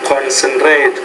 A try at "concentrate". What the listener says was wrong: Okay, let's try the word concentrate. You're pronouncing concentrate. You're pronouncing that R a little bit too hard, so just concentrate.